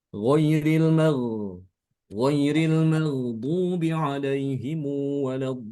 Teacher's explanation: Panjangin mad lazimnya 6 harokat. Mad lazim di sini pada kata ad-dallin 6 harokat